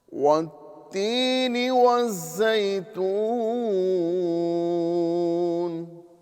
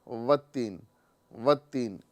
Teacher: یہاں پر ایک بات میں آپ کو بتاتا چلوں کہ جو ہم واو ادا کر رہے ہیں، تو واو یہ ہونٹوں کی گولائی سے ادا ہوتا ہے۔ اگر ہم ہونٹ کو گول نہ کریں تو واو مکمل ادا نہیں ہو پاتا۔